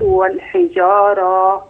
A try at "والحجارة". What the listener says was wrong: والحجارة. لا، راء بآخرها ألف، لكن دي تاء مربوطة. الحجارة.